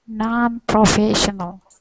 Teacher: The emphasis on this word is non.